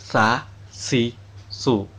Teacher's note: Makhraj huruf sa adalah ujung lidah yang menyentuh ujung dua gigi seri atas.